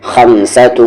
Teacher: تنوین کے بعد سین ہے، اخفا ہوگا